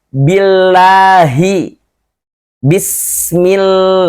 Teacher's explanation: lafaz Allah juga tetapi lamnya dibaca tipis · Lafaz Allah sebelumnya ada huruf apapun berharokat kasroh, maka lafaz Allah lamnya dibaca la. Tipis, parkik.